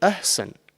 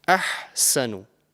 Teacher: the first one is the ha from the middle part of your throat